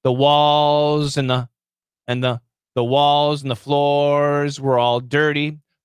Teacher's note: so and the becomes n with a really long end sound it's fast but it's actually stretched out